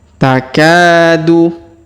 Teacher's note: Perhatikan huruf K yang ini ya. Kita panjangkan 2 harokat karena di depannya terdapat alif.